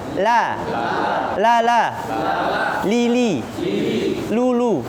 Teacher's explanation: lam itu adanya di depan ya. Jangan sampai lamnya kayak kita tebal ya.